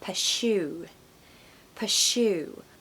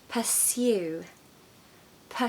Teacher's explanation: the important sound here is the little Y sound in the second syllable so you have to say pursue Pur so it's like s